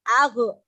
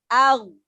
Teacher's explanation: ghin sukun jangan dipantulkan. Banyak yang membaca ghin sukunnya dipantulkan. Padahal dia bukan huruf qalqalah. Jadi tidak boleh memantul. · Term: ditahan